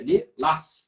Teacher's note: Ó, a sílaba tônica, lilás. A sílaba tônica forte é a última